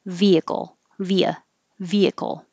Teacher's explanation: it is three syllables vehicle but you can kind of squish the middle one